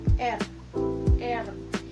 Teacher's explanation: itu seperti ada hambatan udara yang keluar karena lidah yang bergetar